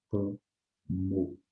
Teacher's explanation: Então, eu chamo a atenção de vocês para essa palavra cromo, né, que apesar de ter a nasalização do O pelo M, mas o M também é pronunciado depois, porque ele faz parte da próxima sílaba, cromo, ok?